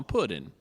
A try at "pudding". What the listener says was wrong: No, pudding with a G.